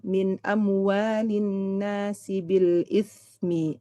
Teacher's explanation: huruf sa-nya dialirkan sedikit lagi, rokhwah ya